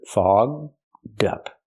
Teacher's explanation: link the d sound to the second word up. So you have dup together